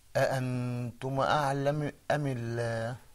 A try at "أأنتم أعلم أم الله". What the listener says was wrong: Okay, mashallah, we need to work on that dhamma, but that's okay